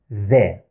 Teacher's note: like the English sound th as in that or this. My tongue is coming out.